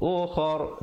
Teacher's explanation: dan ra-nya dibaca dengan tebal